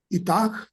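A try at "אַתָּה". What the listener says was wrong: No, esta G no suena al final. No. A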